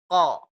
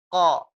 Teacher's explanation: Pangkal lidah dan langit-langit mulut bagian belakang. Berarti ini pangkalnya naik, Bu. · Kalau qaf, ini nggak ada anginnya, Bu. Anginnya nggak keluar, Bu. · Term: huruf qaf